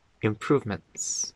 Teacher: when we say improvements, that TS at the end just becomes a glottal stop.